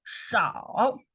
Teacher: And the 是 少 and also is third tone. You go down first and then you go up.